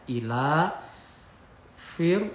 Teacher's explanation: Ila fir, fir ini tarqiq ya. Ada ro mati sebelumnya berharokat kasroh, dibaca tarqiq atau tipis. Jadi fir, jadi kalau sebelumnya a berarti tebal ya, tafkhim.